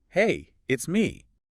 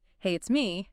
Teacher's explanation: And if you went up at the end, hey, it's me, that would sound like a question, like you're unsure if the person knows who me is.